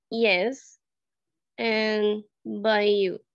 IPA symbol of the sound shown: j